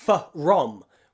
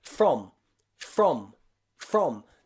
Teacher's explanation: sure that you're not pronouncing two separate sounds it's not fu the f has to really quickly join and blend together with the l or the r so we don't say f rom we say from okay that